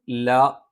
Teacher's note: ഒന്നാമത്തെ അക്ഷരം ല. ല നാവിൻ്റെ അറ്റം മേലെ മുൻപല്ലിൻ്റെ മോണയിൽ സ്പർശിച്ചുകൊണ്ടാണ്.